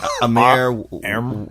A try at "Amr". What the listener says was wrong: There's no I. It's Armor.